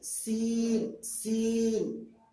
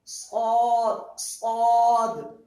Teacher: صاد کی آواز میں بھی نرمی ہے، بالکل ایک دم نرم کر کے، صاد، لیکن وہ اسی کو جب سین ادا کریں گے تو تھوڑی سی ہلکی سختی ہوگی.